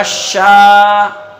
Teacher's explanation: الف مدہ کو ایک الف کے برابر کھینچ کے پڑھتے ہیں